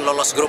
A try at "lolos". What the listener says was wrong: Oke, nah lolos, bukan U pakai O, lolos dari grup.